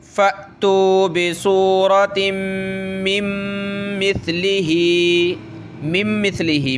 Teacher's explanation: تو یہ بیچ میں نون ساکن جو ہے ختم ہو جائے گا، لیکن پڑھتے وقت ہم نے یہاں ناک میں آواز پیدا کرنی ہے، ٹھیک ہے؟ فَأْتُوا بِسُورَةٍ مِّن مِّثْلِهِ، مِن مِّثْلِهِ، میم پلس میم، نون نہیں پڑھا جائے گا، ٹھیک ہے؟